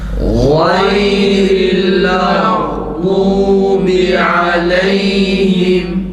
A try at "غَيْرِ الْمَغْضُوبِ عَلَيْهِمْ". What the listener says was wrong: Gayn harfi boğazdan çıksın. Gayril mağdubi aleyhim.